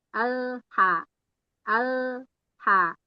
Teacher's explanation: Nah, lepasnya jangan sampai dia mantul. Al langsung lepas, langsung keluar huruf yang lain yang di depannya.